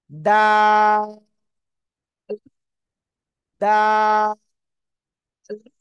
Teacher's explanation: উচ্চারণ করতে হবে তিন আলিফ টান দিতে হবে · জিহ্বার আগা দুই দাঁতের গোড়ায় লাগান